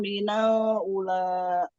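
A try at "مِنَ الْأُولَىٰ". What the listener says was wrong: Ula, U-nya panjang. Walal ula, U-nya panjang. Minal ula.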